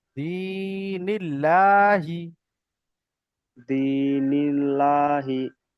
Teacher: আল্লাহ শব্দের ডান দিকে জের এসছে, তাই আল্লাহর লামকে বারিক করে পড়তে হবে।